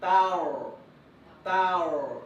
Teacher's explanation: So just a reminder, the one that should be heavy is huruf ra, not huruf ta. So ta must maintain light. Then go into a heavy sound of huruf ra.